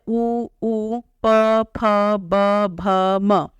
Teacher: फ ब भ म ओष्ठ का अर्थ होता है होठ तो जब हम इन वर्णों को बोलते हैं तो हमारे जो होठ है होठों का आपस में स्पर्श होता है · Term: ओष्ठ वर्ण